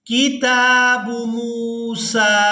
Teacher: میم کو واو ساکن کے ساتھ ملاتے ہوئے کھینچ کر ادا کریں گے